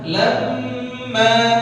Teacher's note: mim musyaddadah mim bertasydid ghunah ditahan